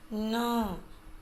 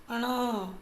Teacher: इसकी ध्वनि नाक से निकलती है, बोलने में पता लगता है, न नाक से आवाज़ आती है, अण नाक से आवाज़ आती है।